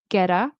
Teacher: there's a vowel sound in front of the T and after the T, very often with American English, it will turn into a flap T, which is a fast D